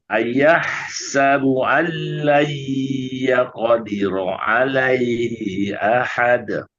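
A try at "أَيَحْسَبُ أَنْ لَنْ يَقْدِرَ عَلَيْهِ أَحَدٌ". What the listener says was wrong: Tinggal alaihi saja ya. Alaihi jangan panjang. Hi ahad. Alai tahan tiga. Di-nya ya qadi jangan panjang. Ya qadiru alaihi.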